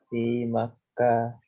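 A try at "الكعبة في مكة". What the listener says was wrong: Iya, jangan ditanwin fi Makkah.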